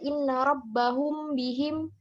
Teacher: Jadi ikhfa syafawi itu apabila ada mim mati bertemu dengan huruf ba, maka cara membacanya dibaca dengan sedikit mendengung.